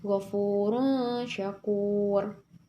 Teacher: ro sukun yang sebelumnya ada waw sukun juga, maka cara bacanya yaitu tebal.